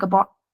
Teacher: here the OU, the diphthong, is just shortened into an O sound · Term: Northern accent